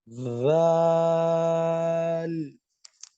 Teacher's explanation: Okay, not the teeth, actually, the gums. The tip of your tongue will touch the upper gum behind the upper teeth in your mouth.